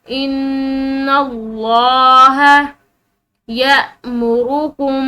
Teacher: तो जब भी जबर वाला या पेश वाला हर्फ जो होगा उसके बाद लफ्ज़ अल्लाह आएगा तो फिर वो जो है अल्लाह के लफ्ज़ की जो ये लाम है ये मोटी पड़ी जाएगी, पुर पड़ी जाएगी